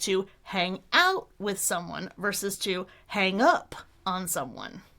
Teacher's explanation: they're prepositional parts of phrasal verbs. So we stress them after the verb